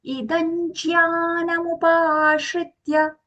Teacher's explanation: I'm saying idanj because the anuswara is followed by the letter jya. I'm saying it as jya. So I'm going to use the anj sound for that anuswara.